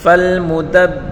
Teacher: کر پڑھیں گے اور با کے اوپر سختی کریں گے، فالمدبرات، را کو پر پڑھیں گے اور ایک الف کی مقدار کھینچ کر پڑھیں گے